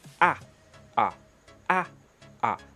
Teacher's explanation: donc ces deux voyelles là sont des voyelles ouvertes ah ah donc la langue s'éloigne du palais la réalisation est dite ouverte